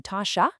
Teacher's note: In spoken, everyday conversational French, especially in places like Quebec, you'll often hear the tu and as just blend right together into ta chat.